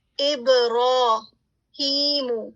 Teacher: را پر فتح ہے اور اس کے ساتھ کھڑی زبر ہے, ٹھیک ہے, یہ بیسیکلی الف مدیہ کی طرح ہے, تو آپ نے اس کو 2 کاؤنٹ سٹریچ کرنا ہے